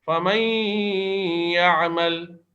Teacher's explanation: اب اس میں دیکھیں میم یا زبر مئی، نون کی جگہ یا ہی پہ تشدید لگا کر یا کو 2 بار پڑھا جا رہا ہے، یعنی نون اور یا کو مدغم کر دیا گیا ہے اور ساتھ میں غنہ بھی کیا جا رہا ہے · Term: ادغام مع الغنہ